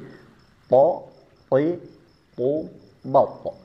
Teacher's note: Dari segi istilanya hanya dimiliki oleh th. Yang angkat pangkal lidah hanya huruf tho saja. Begitu juga dari segi pertemuan lidah ke langit-langit mulut.